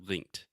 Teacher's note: So the first part is when you say linked, you are just adding a T sound after the K. So linked. You're not saying linke, just linked.